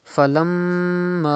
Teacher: It is Mim Mushaddad. You have to pronounce with Gunna.